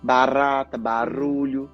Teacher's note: O nosso R do português, barata, é um som longo, eu posso prolongar.